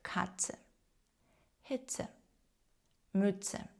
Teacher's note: буквосполучення тцет ми вимовляємо як один звук